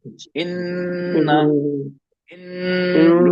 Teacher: नाक जी में आवाज ले जाते हैं और उसको थोड़ा रोक के रखते हैं, होल्ड करके रखते हैं। इन, इन, हमने रोक, हाँ, हाँ रोक लिया, हाँ ठीक है। · मखरज जबान की नोक मसूड़ों पे लगती भी है और नाक आवाज आती है, इसमें दो चीज होती है, दो ठीक चीज हो होती है, मखरज और नाक के बाद। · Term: गुन्ना